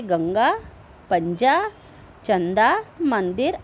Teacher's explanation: इनके उच्चारण में हवा केवल नाक से निकलती है इसका उच्चारण अधिक जोर से होता है अनुस्वार शब्द के ऊपर